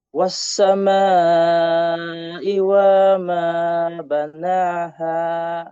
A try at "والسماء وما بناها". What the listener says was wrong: Huwag mong patagalin yung wama. Hindi siya wama. Hindi. Wama. Wassama. Wama banaha.